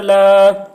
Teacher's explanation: ولا تحاضون لام کھڑا زبر لا، لام کے اوپر کھڑا زبر ہے، کھڑا زبر برابر ہوتا ہے الف مدہ کے، اس لیے کھڑا زبر کو ایک الف کے برابر کھینچ کر پڑھیں گے